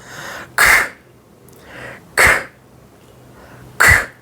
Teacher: Only a strong breath force. The velar sound. From the velum or short or the soft palate, the sound is the sound symbol or the sound is produced, and the sound would be like this.